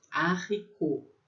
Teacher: Esse T é mudo no final